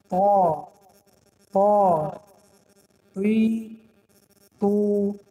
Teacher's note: قفای زبان برداشته می شود برای خاطر که حرف غفظ خوانده شود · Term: حرف تا